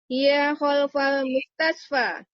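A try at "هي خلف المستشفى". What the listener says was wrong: Jamil.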